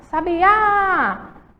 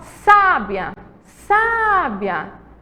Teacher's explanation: Sá é a sílaba mais forte, está acentuada